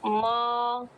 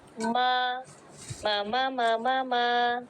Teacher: پہلا ہونٹ دوسرے ہونٹ سے جڑتا ہے تو نرمی کے ساتھ جڑے گا تو میم باریک آئے گا. اگر سختی کے ساتھ جوڑیں گی تو میم موٹا آئے گا.